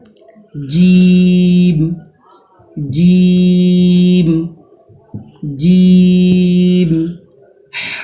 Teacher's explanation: ثا، ثا، ثا۔ جیم، بیچ زبان تالو سے مل کر جیم ادا ہوتا ہے، جیم کو 5 الف کے برابر کھینچ کر پڑھیں گے۔